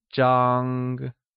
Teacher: It is pronounced with a high level tone